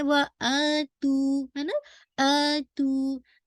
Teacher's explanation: ये असल में था आ तू था, ठीक है, लेकिन क्या है आ तू, क्योंकि फतह की दोस्ती अलिफ के साथ है, तो हमजा जो है वो अलिफ के साथ रिप्लेस हो गया। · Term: मद्दुल बदल